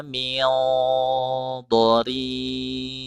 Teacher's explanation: dibaca ikhfa, didengungkan. Dengungnya dengung tebal. Karena huruf dha mempunyai sifat isti'la, sifat idbaq.